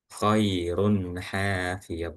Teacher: ada huruf tanwin atau dommacain di huruf ro yang bertemu dengan huruf ha ya. Maka di situ dibaca izhar atau jelas